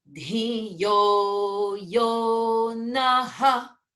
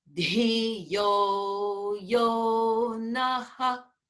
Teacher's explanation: really emphasize that visarga with a breath sound outwards